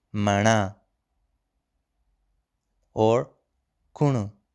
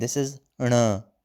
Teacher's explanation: So it's a retroflex N sound.